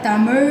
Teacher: தமிழ் அப்படிங்கும்போது நாக்கு வந்து அழகா போயி இந்த மேல் அண்ணத்தை தொடும். அந்த அன்னத்தை தொடும்போது நம்மளோட ஆக்சுவலா பீமியல் சுரபி வந்து ஆக்டிவேட் ஆகும்.